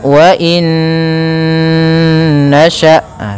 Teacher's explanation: cara membacanya masukkan Nun yang pertama kepada Nun kedua kemudian ditahan gunahnya karena idgham itu memasukkan Bil ghunna disertai dengan ghunah maka wainasya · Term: idgham bhunah, idgham bi gunnah